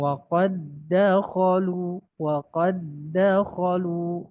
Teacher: dal itu ya termasuk punya sifat qalqalah jika sukun ya. Maka ketika diidghamkan qalqalahnya hilang